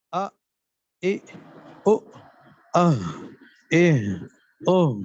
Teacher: حلق کا وہ حصہ جو سینے کی طرف ہے، اس سے 2 حروف ادا ہوتے ہیں، حمزہ اور ہا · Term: اقصی حلق